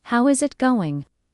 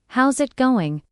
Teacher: Instead, "How is it going?" becomes "How's it going?" The is disappears, and the final G in going often softens. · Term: connected speech